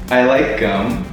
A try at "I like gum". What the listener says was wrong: The moment or syllable right before the very end, you're going high-low.